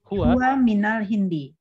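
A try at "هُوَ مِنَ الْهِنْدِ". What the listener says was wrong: Aywa, ahsanti, huwa minal Hindi.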